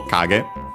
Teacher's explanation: on its own is actually accented on the first syllable